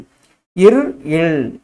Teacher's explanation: மேல்வாயை நாக்கின் நுனி வருவதால் உருவாகிறது